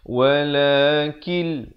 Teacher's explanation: Walakil di sini idgham bila gunnah. Asalnya walakin, bila datang lam jadi kil.